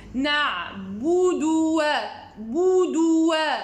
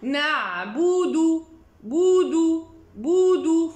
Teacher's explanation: soit de garder bien les lèvres devant dans le dhamm jusqu'à finir le dal, c'est-à-dire la première et la deuxième lettre, ou bien faire le dhamm du premier, revenir légèrement et refaire le dhamm